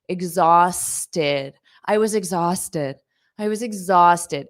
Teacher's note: Notice the pronunciation of this ed is id, exhausted. But you have to add that t so it sounds like tid